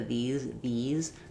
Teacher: So you have the high front E, very tense, tongue is high. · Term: E vowel